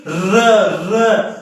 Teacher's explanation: लुंठित या प्रकंपित र जब जीभ जब हमारी जीभ है ना जब हम र का उच्चारण करते हैं तो जीभ में जब तुम बोलोगे कि र तो जीभ में वाइब्रेशन होगा कंपन होगा अंदर से ऐसे झनझनाहट होगी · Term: लुंठित या प्रकंपित व्यंजन